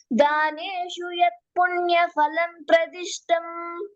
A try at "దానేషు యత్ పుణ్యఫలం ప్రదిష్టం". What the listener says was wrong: Okay, ఫలం, ఫలం ఫా కాదు.